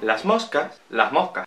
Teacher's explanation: la aspiración de las S's al final de la sílaba.